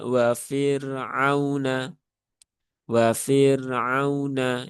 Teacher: Ra sukun yang berhubungan dengan kasroh ya dia dibaca dengan tipis wafir ya bukan wafir tapi wafir biasa wa fir'auna dan tidak perlu ditekan ya.